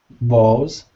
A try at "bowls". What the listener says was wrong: I think it's the L that I'm still hearing that L. Lingering. I'm hearing bowls. Say O. Bowl. O. Bowl. It's exactly like saying, oh, hi there. It just has a little w at the end, but that's it.